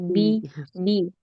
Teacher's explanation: Bi bukan hames ya. Tapi jahr kuat syiddah nafnya tertahan ya.